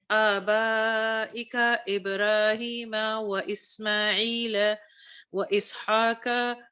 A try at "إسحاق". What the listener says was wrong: قاف کو تھوڑا سا موٹا کرو.